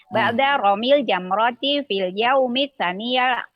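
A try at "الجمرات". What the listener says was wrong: Bukan jamrot Ibu, tapi jamarot. Dia sama seperti rokah, jamanya rokaat begitu. Arafat. Ba'da ramil jamarati fil yaumi tsani asyar awis salisa asyar.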